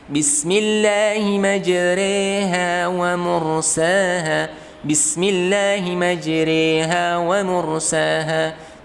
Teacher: imalah yang digunakan itu adalah imalah yang kubro. Jadi lebih jelas kepada e-nya.